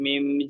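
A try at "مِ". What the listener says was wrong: মিম। মি টান হয়ে যাচ্ছে, টান হবে না, গুণনা হবে। মিম।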